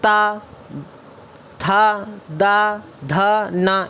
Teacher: ता वर्ग ये रहा जो दांत से बोला जाता है।